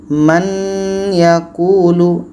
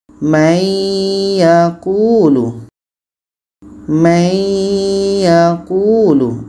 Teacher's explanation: Cara masuknya adalah bunyi nun hilang masuk ke ya. May yaquulu diiringi dengan dengung. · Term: idgham